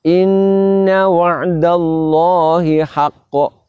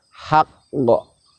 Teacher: Kita tahan sejenak untuk menyempurnakan makhrajnya huruf qaf sukun yang telah dileburkan ke qaf tanwin